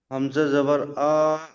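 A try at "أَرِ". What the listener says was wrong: হামজা জাবার আ টান হবে না ভাই। হামজা জাবার আ,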